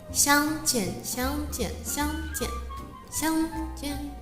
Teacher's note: So in Mandarin, the tone of 相 is the first tone, and the tone of 见 is the fourth tone. The first tone starts at a relatively higher point and stays there, whereas the fourth tone starts from an even higher point and goes downward straightforwardly.